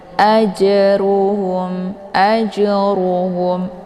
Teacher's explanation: Jim sukun yang terdapat di pertengahan ini dinamakan dengan qalqal jadi cara bacanya jimnya dipantulkan dengan pantulan ringan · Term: qalqalah sughra